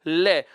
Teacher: जीभ मसूड़े के पास चली जाती है और हवा का अधिकांश भाग किनारों से बाहर निकलता है · जीभ का अग्र भाग मसूड़ों के अग्र भाग से स्पर्श कर रखा है और हवा कहां से निकल के आ रही है दोनों साइडों से बाहर निकल के आ रही है किनारों से बाहर निकल के आ रही है बगल से बाहर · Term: ल वर्ण, पार्श्विक